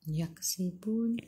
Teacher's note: Sebelum huruf akhir ada waw yang tak ada baris ma'aril sukun, boleh baca 2, 4 atau 6 rakaat. Matikan dengan huruf nun, hujung lidah menyentuh gusi atas.